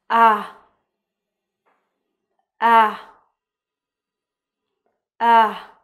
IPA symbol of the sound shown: æ